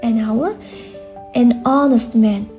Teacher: H tushib qolgan va unli harf bilan boshlanyapti.